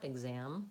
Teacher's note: And I would say going from the a to the exam, that maybe not thinking about trying to have any extra vowel sounds in there and just thinking about like the word am, that you're moving from the open a up to the m. Probably your difficulty is that you're having to slide closed on that, exam.